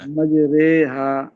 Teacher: الف کو یا کی طرف جھکانا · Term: امالہ